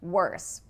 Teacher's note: Worse actually has that R-colored vowel again.